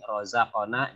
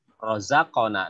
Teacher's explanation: Bila dia ada di tengah-tengah seperti ini, rozaqona, jadinya qalqalahannya kecil, sedang. Rozaqona, nektoknya kecil. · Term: qalqalah istilahnya sugro